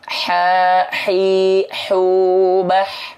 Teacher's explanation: sini ya nih Kita coba nah perhatikan nafas biasa Maaf ya Nah kalau H kecil di tengah-tenggorokan pasti berbisik · kalau ha kecil di tengah tenggorokan pasti berbisik. Gak mungkin gak berbisik.